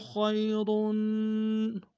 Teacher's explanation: یا لین بغیر کھینچے پڑیں گے